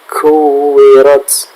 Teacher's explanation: untuk ta yang bersukun di akhir ayat, perhatikan di situ tidak sekadar ta, tapi ada sedikit s-nya. Sedikit ya, tidak lebih.